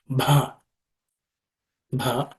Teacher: it has to be aspirated it's Maha Prana consonant